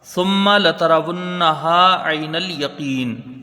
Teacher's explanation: ثم ایک الف کی مقدار یہاں غنہ ہوگا ، سا کو جب میم سے ملائیں گے، میم مشدد ہے